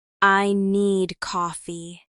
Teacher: Stress is on need. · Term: sentence stress